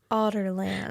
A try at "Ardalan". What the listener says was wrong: It's not a hard D. There is no D.